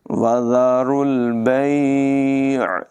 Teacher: را کو پر ادا کریں گے، را کو لام کے ساتھ ملائیں گے، واو اور الف کو نہیں پڑھیں گے۔